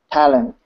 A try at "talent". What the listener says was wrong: Talent. I'm hearing a little bit of talent. A little bit more pronunciation on the T. Talent.